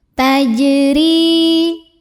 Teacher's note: Huruf ra dibunyikan secara tarqiq karena ra-nya ini berbaris di bawah kasrah. Cara membacanya tipis, pangkal lidah datar, ringan. Tajri, ri mad tabi'i, karena ada ya sukun yang didahului baris kasroh.